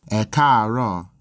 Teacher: Note that if there's more than one tone in one syllable, then the vowel is normally written once for each tone. These three A's are all part of a single syllable, but with a high-low-high progression.